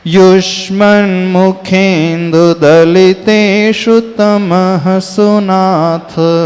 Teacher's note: युष्मन में भी जो श है वो भी षटकोण का मूर्धन्य श है, यानी हमारी टंग जो है ट्विस्ट होगी अपर जौ में, अपर तालु में